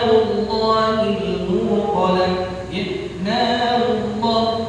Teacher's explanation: ini sebelumnya apa Huruf ra harakatnya apa D damah maka lafaz Allah ini dibaca tafkhim atau dibaca tebal